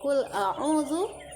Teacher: Qul a'udzu mengandung hukum tajwid mad tabi'i. Artinya setiap huruf mad tabi'i harus dibaca 2 harokat atau 1 alif.